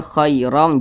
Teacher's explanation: jangan sampai ke huruf e ya, karena pada huruf ya yang sukun, huruf lin pada huruf ya sukun itu biasa kadang ada juga tuh yang menyebutkannya itu dia condong ke huruf e